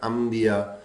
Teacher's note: جی یہ میم ایسے آ گیا کہ نون ساکن تھا، اس کے بعد حرف با آیا، اس نے اس کو نون ساکن کو میم سے بدل دیا